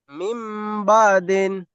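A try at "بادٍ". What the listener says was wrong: বা দিন না, বা আদি।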